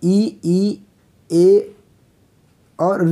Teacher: जीभ के अगले भाग से जिनका उच्चारण होता है उसको बोलते हैं अग्र स्वर